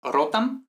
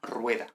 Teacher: La M al final de palabras se pierde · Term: pérdida de consonantes finales